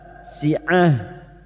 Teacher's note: tak marbuto yang berharakat kasrot tanwin pada saat dibaca wakaf bunyinya si'ah menjadi ha